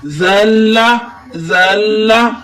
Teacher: زا کو ہم لام کے ساتھ ملا کر الف کو حذف کر دیں گے ہم وصل کریں گے وصل کے معنی کانٹیکٹ یا ملانے کے